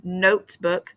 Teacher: the first syllable is the accented one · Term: accented syllable